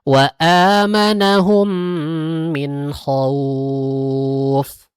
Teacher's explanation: ada wau sukun sebelumnya ada berharakat fathah kemudian disukunkan diwakafkan maka dia disebutnya dengan madlin